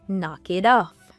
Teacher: because of the American accent, the T from it also changes to a D sound.